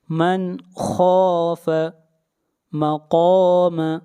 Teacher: خا کو موٹا پڑھیں گے، خا حروف مستعلیہ میں سے ہے